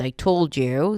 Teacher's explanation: 'told' would be the primary stress of the phrase or the focus word